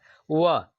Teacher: व बोल रहे तो दांत, जो दांत है ना, वो ओठ से संपर्क कर रहा है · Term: दंत ओठ